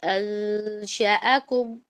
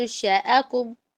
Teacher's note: انشأکم میں نون اور شین کے درمیان میں یہاں پر ایک غنہ ہو رہا ہے جس کو ہم اخفا کہتے ہیں، ٹھیک ہے. انشأکم، آپ نے نون اور شین کے درمیان میں نا اپنی زبان کو رکھنا، درمیان میں رکھنا، نہ پورے نون میں جائے نہ شین میں جائے، اور 2 الف کے برابر اس کو لمبا کریں گے.